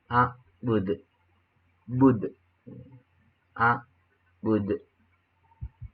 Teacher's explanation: mengandung hukum tajwid qalqalah, dan cara membacanya ialah memantul.